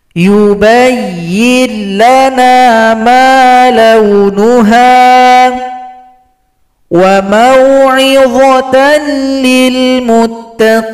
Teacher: Sekarang kita lihat contoh pada idgham bila gunna. Perhatikan bunyi nun dan tanwin kita gabung kepada huruf lam. Setelah digabung tidak boleh didengungkan.